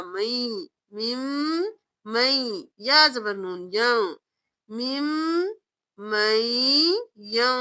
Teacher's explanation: نون یا میں مدغم ہو رہا ہے غنہ کے ساتھ، میم زیر میم، میم، میم زبر یا مئی، میم مئی، یا زبر نون یا، میم مئی یا۔ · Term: ادغام مال غنہ